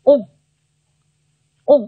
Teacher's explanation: o▁n▁呢组成字母组合啊，又一个鼻腔元音来了